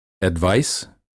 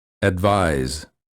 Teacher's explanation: The first word of the pair ends with the voiceless consonant and the second with the voiced one.